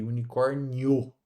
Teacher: o I é uma semivogal e o O aqui, ó, é uma vogal. Ou seja, o O se destaca mais na pronúncia do que o I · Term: Ditongo crescente